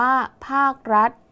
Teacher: คำว่ารัฐมีฐฐานเป็นตัวสะกดแต่ออกเสียงพยัญชนะท้ายเหมือนดเด็ก · คำว่าภาคมีคควายเป็นตัวสะกดแต่ออกเสียงพยัญชนะท้ายเหมือนเสียงกไก่ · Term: แม่กด